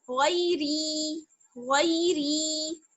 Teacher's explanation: غی کو جلدی پڑھنا ہے اور ری کو 2 حرکات کے برابر کھینچنا ہے